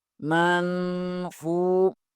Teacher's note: نون ساکن کے بعد فا حروف اخفا میں سے ہے، یہاں اخفا ہوگا، من، فا پیش کے آگے واو مدہ آ رہا ہے، اسے بھی ایک الف کے برابر کھینچیں گے